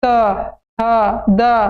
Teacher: जीभ जो है पूरा दांत को दाब देगा देखना त थ द दांत में दबा रहा है सबका उच्चारण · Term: त वर्ग